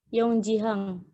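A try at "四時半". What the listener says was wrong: Bukan Yong ya. Tidak ada N.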